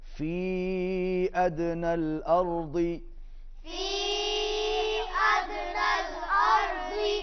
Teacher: فی کے اوپر چھوٹی مد ہے، اس کو لمبا کھینچیں گے، دال پر قلقلہ کریں گے